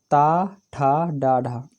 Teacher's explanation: हिंदी की मूर्धन्य ध्वनियाँ हैं।